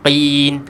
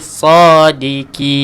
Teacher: pastikan kita baca dengan tebalkan juga huruf qaf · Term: ketebalan huruf qaf